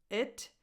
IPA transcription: ɪ